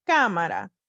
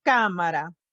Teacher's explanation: Now, if I were speaking normally, I would say cámara. You hear that I accented the A that has the accent mark on it.